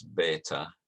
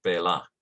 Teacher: the christians have penultimate stress beta whereas the jews have final stress bella · First of all, that the Christians have a T where there was an ancient interdental th, whereas the Jews have an L, a lateral. Also, the Christians have penultimate stress, beta, whereas the Jews have final stress, bela.